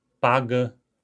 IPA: pagə